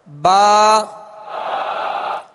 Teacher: با کا جو مخرج ہے دونوں ہونٹوں کے تر حصے سے یہ ادا ہوتا ہے، دونوں ہونٹوں کے تر حصے سے ادا ہوتا ہے.